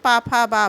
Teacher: और पा, फा, बा, भा, ये ओष्ठ देखिए, पा, फा, बा बोल के आप देख सकते हैं, पा, फा, बा, भा, दोनों ओठ आपस में क्या हो रहे हैं? मिल रहे हैं।